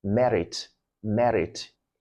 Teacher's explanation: it's pronounced with an alveolar trill. So you hear something like merit, merit.